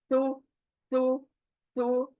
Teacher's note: जैसा सु के पास पहुंचते साथ ही मुझे मखरज याद आना चाहिए, कैसे पढ़ना है इसको। सु सु यानी जबान बाहर आके ऊपर के दांत जबान को कट करेगी।